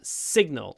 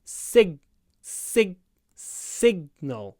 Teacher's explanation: signal signal um the stress is on the first syllable signal so you need to make the S long